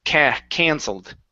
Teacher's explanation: Instead of cancelled, give me an ah sound. Push the sound up into your nose.